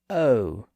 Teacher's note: in American English it tends to be pronounced as o with a little ooh sound at the end